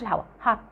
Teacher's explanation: قفلت لساني ما طلعتش الهواء، هات. لو طلعت الهواء كده تبقى تي ترو.